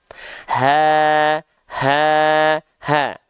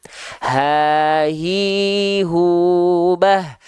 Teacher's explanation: Makanya hak besar dia mengalirkan nafas. Kenapa? Karena pita suaranya membuka. · Kalau teman-teman selama ini punya persepsi bahwasannya hak besar itu dilafalkan dari dada, ternyata tidak. Ya, hak besar itu dilafalkan dari aqsal halqi.